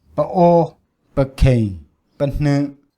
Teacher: And the voice quality is hard to perceive due to short duration, but it is apparent that it's glottalized before a glottal stop on the main syllable